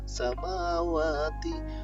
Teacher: Karena di sini ada harokat fathah yang kemudian diikuti dengan huruf alif, sehingga membacanya panjang dua harokat atau satu alif. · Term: mat tabi'i